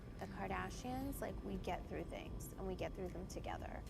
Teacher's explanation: Vocal fry is indeed a creaky kind of voice.